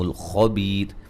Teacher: لیہ مدہ, خا کو موٹا, بیہ مدہ ہے. وقفاً را کو باریک پڑھیں گے, ملانے کی صورت میں را موٹی ہوگی. وقفاً بڑی مد کے ساتھ بھی پڑھیں گے.